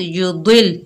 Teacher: द्वाद तो मोटा हरूफ है, लाम के साथ मिलाकर पढ़ेंगे तशदीद वाले हर्फ के साथ।